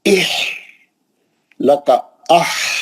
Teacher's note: हा का आवाज ऐसा रहना, जोर से नहीं आना आवाज, हा का आवाज सांस के वैसा आवाज रहना, प्रेशर से हवा का आवाज कैसा रहता वैसा।